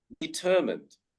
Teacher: But in this word, we do not say mine or mind, we say determined. So the stress is on the ER sound, determined. So we do not say mind, but we say mund in this word, determined.